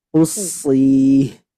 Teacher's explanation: Qafnya tidak boleh dengung. Nah, tidak boleh dengung. Dan sadnya ketika mad juga tidak boleh dari hidung.